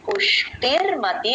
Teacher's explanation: విసర్గ పక్కన నామంతో కలిసి ర లాగా మారుతుంది